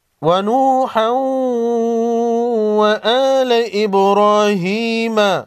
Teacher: با ساکن کو ہلا کر پڑھیں گے، با حروف قلقلہ میں سے ہیں